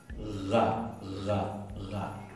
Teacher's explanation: la gain árabe es fricativa y se pronuncia un poquito más atrás de lo que se pronuncia en castellano